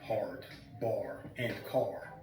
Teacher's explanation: British English was rhotic, meaning they pronounced the R in words like hard, bar, and car